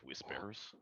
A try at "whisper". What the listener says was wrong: You gotta pronounce the H more.